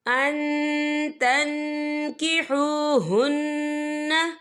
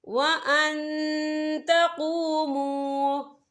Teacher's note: تو ہم یہ اکفا کریں گے، نون ساکن کی آواز کو ناک میں چھپائیں گے۔